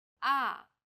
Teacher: the fourth tone Falls sharply and quickly from a high pitch